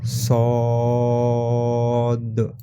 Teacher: آخری میں قلقلہ بھی کریں گے کیونکہ دال پر جزم ہے، ٹھیک ہے؟ اب یہاں پر دیکھیے ہا کے اوپر کھڑا زبر ہے، ہا کھڑا زبر ہم کیسا لکھ سکتے؟